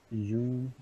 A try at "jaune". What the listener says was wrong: Jaune. Acuérdense que ahí la U suena como, perdón, como O. Jaune.